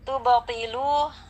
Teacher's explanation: Tubtilu ada ba sukun di tengah kata, maka hukumnya qalqalah sughra. Kita baca dengan memantulkan bacaan ba sukunnya dengan pantulan yang tidak terlalu kuat ya, karena dia qalqalah sughra.